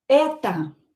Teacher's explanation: when O is not stressed, we are going to pronounce it as a.